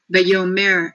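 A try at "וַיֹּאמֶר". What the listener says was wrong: Okay, the accent on that word, Vayomer.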